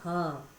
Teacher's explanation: फिर होता है स्वर यंत्रीय, यानी कि स्वर यंत्र से निकलता है ह।